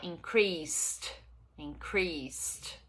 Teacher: Increase. E aí a gente vai ter no passado de novo o ED com som de T